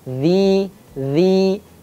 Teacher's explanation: ketika kita ingin mengucapkan dza dengan baik dan benar maka ujung lidahnya harus tepat bertemu dengan ujung gigi seri yang atas